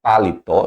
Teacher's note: eu tenho uma oxítona, sílaba tônica na última, então eu tenho a palavra paletó, que é trissílabo, tá vendo?